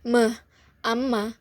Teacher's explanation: fonem M, cara artikulasinya nasal atau sengau dan tempat artikulasinya di bilabial atau dua bibir